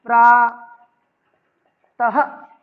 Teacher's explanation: तो विसर्ग का मतलब होता है जैसे बोलने के लिए ध्वनि, जिसे कहते हैं ह की आवश्यकता होती है। इसे बोलते समय किसकी आवश्यकता होती है, ह, यानी जोर लगाकर बोला जाए।